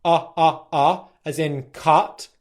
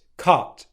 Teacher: Where the /ʌ/ sound the tongue is further back in the mouth